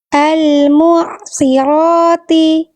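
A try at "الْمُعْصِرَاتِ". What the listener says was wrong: Al-mu'asirati. Coba mu'asi. Al-mu'asirati. Oke, apa yang membuat sod yang ini lebih kagok? Setelahnya huruf ro. Jadi harus siap-siap huruf ro, tapi sod harus tetap terjaga. Nah, akhirnya fokus ro-nya oke, sodnya terdampak.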